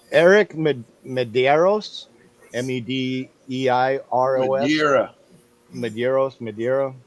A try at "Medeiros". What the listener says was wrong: Madero. The S is silent. It's Madero.